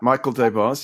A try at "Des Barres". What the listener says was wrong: The S is silent, by the way. It's Des Barres.